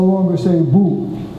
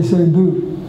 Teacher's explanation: All through North America, oo is being fronted.